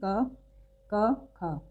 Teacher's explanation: अगर आप अघोष व्यंजनों का उच्चारण करें जैसे कि क, ख, तो ग, घ और अंग के मुकाबले क, ख में कम कंपन आपको महसूस हो रहा होगा।